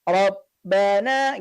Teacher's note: Pada kalimat yang pertama, kita menemukan kata Rabbana, ya, ada huruf ba bertasydid. Ya, ketika kita menemukan ada huruf ba bertasydid, sahabat-sahabat Al-Quran, tentunya ba-nya ini dibaca terputus. Rabbana gitu ya, tidak mengalir karena dia memiliki karakter suara yang terputus.